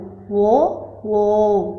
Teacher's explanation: ఇవి కంఠము ప్లస్ ఓష్టం నుండి పలుకుతాము. అంటే కంఠము, పెదవులు. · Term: కంఠోష్ట్యాలు